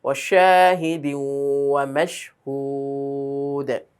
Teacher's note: ওয়াশা টান হবে এক আলিফ।